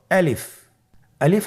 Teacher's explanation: আলিফ হরফটি মাখরাজ হলো আপনার মুখের শূন্যস্থান থেকে গলা এবং মুখের শূন্যস্থান হতে আলিফ হরফটি উচ্চারিত হয় । আমরা সবাই বলি আলিফ। এর পরবর্তীতে আপনারা দেখতে পাচ্ছেন তিনটি